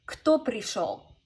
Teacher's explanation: you actually should go down in your intonation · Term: downward intonation